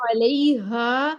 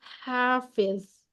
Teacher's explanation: پہلی والی ہا سینے سے نکلے گی، دوسری والی ہا جو ہے وہ ہماری وسطی حلق سے نکلے گی